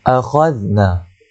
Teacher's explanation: Kemudian akhadna, huruf kha. Akhadna, zal di hujung lidah, da di hujung lidah